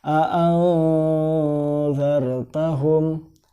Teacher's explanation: Nah, di sini ada nun mati bertemu dengan zal, di mana zal ini adalah salah satu huruf ikhfa, maka dibaca berdengung atau samar